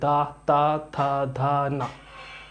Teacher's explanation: अब दंत, भाई दंत भी देखते हैं, जो दांतों को टच हो, दा, जीभ हमारी दांतों को टच कर रही है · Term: दंत्य व्यंजन